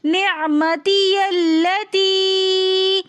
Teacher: نعمتی التی میں یا کو ہم لام کے ساتھ ملا کر پڑھیں گے